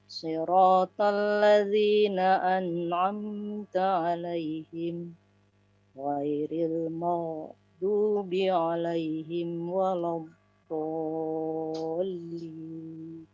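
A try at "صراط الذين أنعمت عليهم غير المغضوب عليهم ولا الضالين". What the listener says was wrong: Masyaallah. Barakallahu fiik. Mumtaz.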